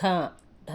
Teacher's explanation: మహా ప్రాణాక్షరం పొట్ట లోపల నుండి రావాలి